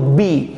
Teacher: ज्यावेळेस मी बी बोलतो ना त्यावेळेस मला दोन्ही होठ एकमेकांवर ठेवावेच लागतात